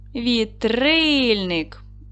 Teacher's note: Падає наголос на другий склад.